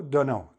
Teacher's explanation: you would drop the t to connect the two words